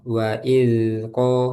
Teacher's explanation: hati-hati dalnya jangan sampai mantul. Wa izko langsung ke kof.